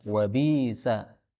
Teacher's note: hamzah bisa diganti dengan ya